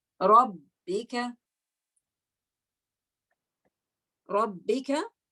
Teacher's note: when you say Rabb, you can feel that the vocal cord's closed. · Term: Jahar